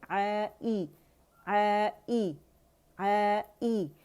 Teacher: आ जब हमने अलजौफ़ से अदा किया, ई की आवाज़ आपकी अक़सुल हल्क़ से आनी चाहिए